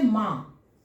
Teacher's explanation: अनुनासिक, अनु का अर्थ हो गया पीछे, नासिक का अर्थ हो गया नाक, यानी वैसा शब्द जिसका उच्चारण करने में मुंह से तो ध्वनि निकल रही है, साथ साथ उसके पीछे नाक से भी ध्वनि निकल रहा है। मुंह के साथ साथ उसके पीछे पीछे नाक से भी ध्वनि निकल रहा है